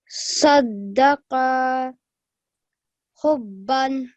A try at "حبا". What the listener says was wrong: Even a bit longer. Hubban.